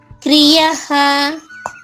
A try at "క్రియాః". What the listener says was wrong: క్రియాహ యాకారం ఉంది కదా. క్రియాహ ఈ ప్రకారమున కొంచెం సాగడ తీయాలి. క్రియాహ